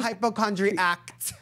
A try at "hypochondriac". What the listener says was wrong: No T.